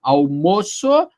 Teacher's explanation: almoço o substantivo é timbre fechado